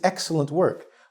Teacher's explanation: We say the X first, similar to X-Men, where we really put the stress on the first part. So the first syllable is stressed.